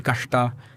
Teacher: That particular retroflex sha, which doesn't exist in Tamil.